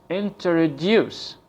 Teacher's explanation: the word introduce is pronounced with a stress at the end of the word.